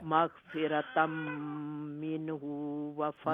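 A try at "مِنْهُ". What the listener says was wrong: منہ ہا لمبا نہیں ہے.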